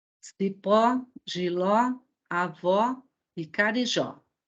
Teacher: Primeiro, quando nós formos pensar em acentuar uma palavra, a primeira coisa que nós temos que fazer é verificar se ela é oxítona, paroxítona ou proparoxítona. Então, onde está o acento tônico dessas palavras? Na última sílaba. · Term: palavra oxítona